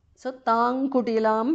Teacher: So tang kutilam because of sandhi. Anuswara changes to nga there.